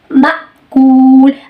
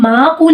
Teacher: میم کے بعد حمزہ ہے تو ہم اس کو جھٹکا دے کے پڑھتے ہیں, یعنی آواز کو فوراً بند کر دیتے ہیں